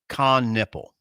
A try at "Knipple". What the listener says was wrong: Knipple. Every time I've heard his name's pronounced, it's been Knipple. That's just how I've heard it pronounced.